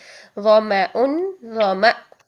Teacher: حمزہ پر جب ہم ساکن کرتے ہیں تو اس کو جھٹکا دے کے پڑھتے ہیں